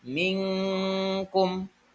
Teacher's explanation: dibaca samar-samar contohnya mingkum aslinya adalah minkum tapi dibaca jadi samar-samar minkkum